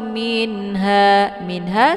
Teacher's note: dibaca jelas tidak boleh didengungkan karena nun ketemu ha izhar. Jadi izhar ini dibacanya jelas tidak boleh berdengung cukup ditekan tidak perlu ditahan.